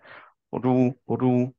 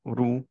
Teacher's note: মুখটা গোল না করে মুখটা স্ট্রেট রেখেন রাউন্ড করেন না একদমই